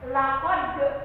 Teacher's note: di sana ada timbul dari tenggorokan, namanya qalqalah. Laqad ada huruf qaf, laqad khalaq sama qalqalah.